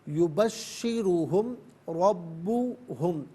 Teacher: را پر زبر ہے تو را کو پر کر کے پڑھا جائے گا، اور با پر تشدید ہے، جماؤں کے ساتھ ادا کریں گے۔